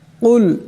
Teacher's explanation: কুল এখানে বড় কাফ আছে, আওয়াজটি গলা থেকে আনতে হবে।